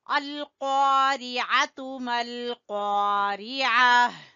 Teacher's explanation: قاف کو زبان کی جڑ سے آپ نے ادا کرنا ہے، موٹا قاف ہے